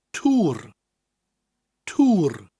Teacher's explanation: which indicates that we're elongated in that o sound tour tour with a rolling R at the end